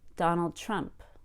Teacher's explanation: Notice that the pitch in my voice went a little higher on the word Trump.